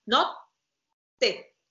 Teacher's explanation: If you have to say notte, you keep this silence, tongue up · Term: double T